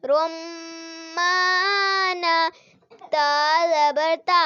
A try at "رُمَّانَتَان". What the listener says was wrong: نہیں غلطی ہوگی الف نہیں پڑھا آپ نے تا زبر غنہ کرے نا کھینچنا نہیں ہے تا الف لمبا غنہ کرے نا روم رمانتانی